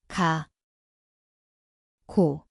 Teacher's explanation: Ia berbunyi seperti G garis miring K. Tempatnya adalah belakang lidah.